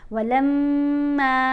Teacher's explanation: میم کے اوپر ہم نے غنہ کرنا ہے. غنہ یعنی آواز ناک میں جائے گی، ایک حرکت کے برابر ٹھہر کر پڑھا جائے گا. ولما، اور میم کو آپ نے 1 الف جتنا لمبا پڑھنا ہے کیونکہ اس کے ساتھ زبر ہے میم کے اوپر اور ساتھ الف ہے تو یہ حرف مدہ ہے.